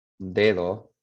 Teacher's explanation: that D that is between vowels is an approximate. Your tongue doesn't completely touch your teeth there.